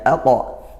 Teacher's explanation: dia qalqolahnya bukan AQ tapi aqo karena ini Huruf tebal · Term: qalqolah sugro